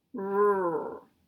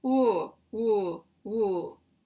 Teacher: these rounded lips are not the same as the puckered lips or the pushed out lips of a w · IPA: [ɹ]